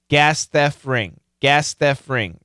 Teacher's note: now obviously the T sound was cancelled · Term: T sound was canceled